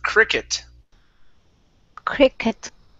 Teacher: we don't want to use an oo. We don't want to say quicket.